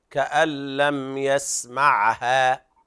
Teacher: مد طبيعي لا تزيد عن الحركتين